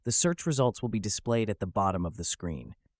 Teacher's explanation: the T sound in results is omitted and displayed links with at